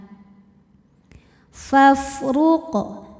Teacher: huruf ra dihukumi dengan ra yang dibaca secara tafkhim karena barisnya dhammah maka dibacanya ditebalkan. Faf ruq kemudian ada hukum qalqalah sughra karena huruf qalqalahnya ini sukunnya sukun asli dan ada di tengah bacaan maka dibaca dipantulkan dengan pantulan yang kecil.